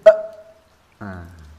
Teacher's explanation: sukunnya huruf hamzah ini adalah dengan menutup pita suara